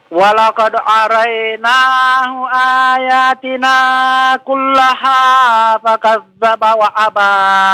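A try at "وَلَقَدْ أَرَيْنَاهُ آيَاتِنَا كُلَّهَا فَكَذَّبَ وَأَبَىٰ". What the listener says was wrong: Naam, bagus.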